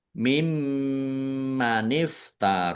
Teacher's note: nun sukun bertemu dengan huruf mim idgham bighunah. Masuk masuk dengan mendengung. Yaitu mendengung mim ditandai mimnya ada tasdidnya.